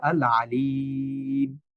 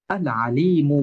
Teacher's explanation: তখন আমি বলব আল আলিম। আর যদি আমি না থামি তাহলে আলি এখানে এক আলিফ টান দিয়ে দ্রুত মিম উচ্চারণ করে পরবর্তী শব্দ উচ্চারণ করব। আল আলিমু বলে পরবর্তী শব্দ উচ্চারণ করব।